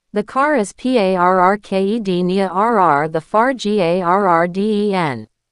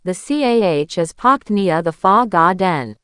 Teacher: In America and Canada, the R is a hard R. It's rhotic. Your tongue curls back, but it doesn't touch the roof of your mouth. Think of a dog growling, grr. · The R turns into a breath of air. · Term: non-rhotic